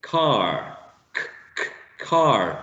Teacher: you actually press the back part of the tongue, the back of the tongue, against the velum, also called soft palate, soft palate, okay?